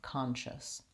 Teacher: So when I'm saying the word conscious, again, I have my ah sound, con, first syllable stress, long, short, and then I just have shus, my sh, my schwa, and my s sound, conscious.